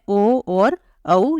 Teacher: स्थान कंठ है उ का उच्चारण स्थान ओष्ठ है तो इसलिए ओ और औ इन दोनों का उच्चारण स्थान ओष्ठ और कंठ ये दोनों ही होंगे